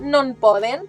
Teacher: Quan la pronunciem ràpid, la pronunciem no en poden. La E s'elimina.